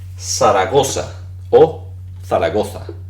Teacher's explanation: su za, que viene siendo su sonido fricativo interdental sordo